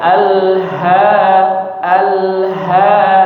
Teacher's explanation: Jadi di sini yang kita baca dengan huruf ha yang dari tenggorokan bagian bawah.